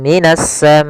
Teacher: alif lam syamsiah yaitu alif lam yang ditulis tapi tidak dibaca langsung ke huruf Sin